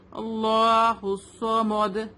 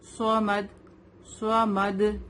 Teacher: ہم میم کو ہیوی نہیں کریں گے، ہمیں صرف صوت کو ہیوی کرنا ہے. میم تو لائٹ لیٹر ہے نا.